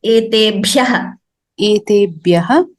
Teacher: Your Mahaprana should be clearer, Bhagini, like etebhyah. There the bha should be clearer.